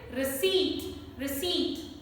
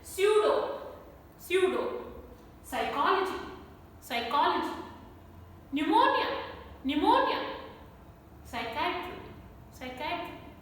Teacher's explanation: p is silent in all these words it is there in the spelling but it is not there in the pronunciation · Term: silent p